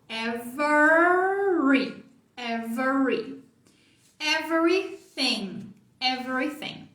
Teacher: Então esse R é o R enrolado de porta. Então enrola a língua antes de fazer.